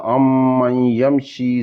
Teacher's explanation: نون مجزوم تھی فوراً بعد یا حرف یلمرون وچ آوا اتھیں ادغام ہوسی، ناقص ادغام ہوسی